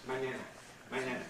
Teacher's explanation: Spanish has this ñ sound, powerful nasal